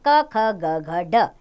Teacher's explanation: क ख ग घ ड इनका उच्चारण स्थान है कंठ यानी कि इसका उच्चारण कंठ से होता है च वर्ग च